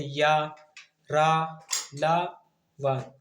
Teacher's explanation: इनका उच्चारण जीभ, ताल, दांत, ओष्ठ को सटाने से होता है, परंतु यह कहीं भी पूर्ण रूप से स्पर्श नहीं होते हैं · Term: अंतस्थ व्यंजन